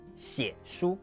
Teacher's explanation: Then put it in the phrase, 写 书, to write a book. Both stay low and creaky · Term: half third tone